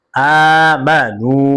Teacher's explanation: পেশের উপরে ওয়াও সাকিন মাদ্দে হরফ এক আলিফ টান হবে, মাদ্দে তবাই।